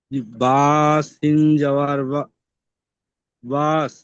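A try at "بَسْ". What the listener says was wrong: এখানে কোনো টান নেই, বাস সিন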